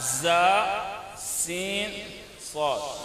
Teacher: 3 حروف ایسے ہیں جو سیٹی کی آواز آنی چاہیے اس پہ